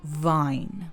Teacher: V and W merge